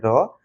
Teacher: र का उच्चारण करने करते समय जीहवा में कंपन होता है। अतः इसे प्रकंपित व्यंजन भी कहते हैं। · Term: लुंठित व्यंजन